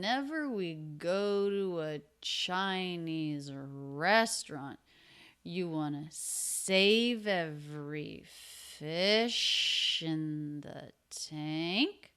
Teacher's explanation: pitch goes up yes no question